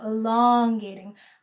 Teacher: I did it in the word elongate just now, elongating. I rode the O sound a little bit extra long so that you knew that was the most important syllable in the sentence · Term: elongating the vowel